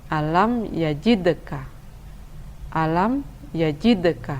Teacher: huruf-hurufnya adalah hurufba Jim Dale PO dan huruf qaf Hai Namun karena berada di tengah kalimat maka ia dibaca dengan kurang mengeraskan Valco lahnya atau Qolqolah Sugro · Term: qalqalah sughra